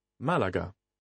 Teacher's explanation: Quite clearly, the stress here is on the first syllable. If you look at the word Málaga, you'll notice that there is a little accent on the first syllable.